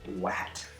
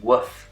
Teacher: One of the most common mispronunciations of R, especially among kids, is to turn it into a W. So this can happen on an L or an R, we call that gliding, but on an R it's especially common.